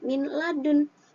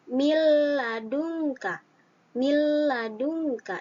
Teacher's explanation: Idgham bila gunnah adalah apabila ada nun sukun atau tanwin bertemu dengan huruf lam dan ro. Ya, lam atau ro, maka harus dimasukkan tanpa didengungkan